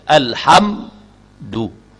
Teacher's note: Mesti diizharkan, dizahirkan bunyi sukun pada mim tu. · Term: izhar syafawi